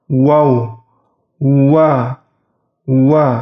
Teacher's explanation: Huruf waw bentuk bibirnya yaitu dicucu atau sedikit dimonyongkan.